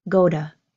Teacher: you don't hear the strong pronounced T for my word to. You hear a held back, a held in go to.